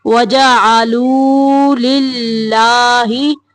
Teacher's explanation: اللہ کا لام باریک پڑھیں گے کیونکہ اللہ کے لام کے پچھلے حرف کے نیچے زیر ہے